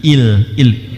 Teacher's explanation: idgham bila ghunah ghunah dengungnya enggak ada in ketemu dengan lam